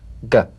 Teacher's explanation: place the back of the tongue in gentle contact with the soft palate let the tongue spring away